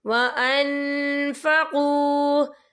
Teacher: لو آمنوا باللہ والیوم الآخر وانفقوا، یہ دیکھیں وان، یا نون ساکن ہے، نون ساکن کے بعد جو ہے فا آ رہا ہے، اور فا جو ہے اکفا کا ورڈ ہے، تو ہم یہاں اکفا کریں گے، نون ساکن کی آواز کو ناک میں چھپائیں گے